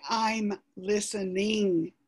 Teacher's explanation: when you say i'm listening i have to add an extra syllable there to get that ing sound